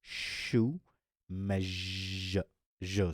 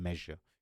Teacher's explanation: you have to vibrate your vocal cords right and then the sh sound will become the z sound like in measure